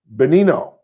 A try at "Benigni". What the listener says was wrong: There's no O in it. Yeah, Benini. if there's no G, then it would just be Benini.